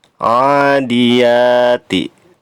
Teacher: ya-nya dibaca panjang juga, sama seperti a, lamanya 2 harokat